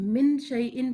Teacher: یہاں پر آپ دیکھیے زبان کی جو نوک ہے، اگر کوئی انسان من شیئن پڑھے تو قرآن کے اندر وہ پڑھے گا مطلب ساؤنڈ آف نون جو ہے یا ساؤنڈ آف نون ساکن جو ہے اس کو ہائیڈ کرنا ہوگا، جس کے لیے ہمیں tip of the tongue ایلیویٹ نہیں کرنی ہے، ہارٹ پیلیٹ کی طرف اٹھانی نہیں ہے زبان کی نوک کو، بلکہ نیچے ہی رکھنا ہے اور غنہ کے ساتھ پڑھنا ہے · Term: اخفا